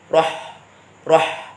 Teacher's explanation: roh-roh nafasnya keluar banyak halus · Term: huruf ha